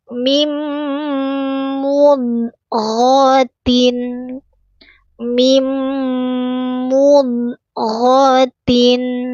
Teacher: Ghoin keluarkan dari tenggorokan paling atas.